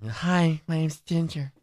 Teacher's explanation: Yeah, I'm going to sound like that. Make it really breathy and high-pitched.